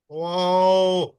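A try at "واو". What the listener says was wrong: আপনার ঠোঁট গোল রয়ে গেছে। হ্যাঁ হ্যাঁ, ওয়া বলে স্বাভাবিক করে ফেলবেন ঠোঁট।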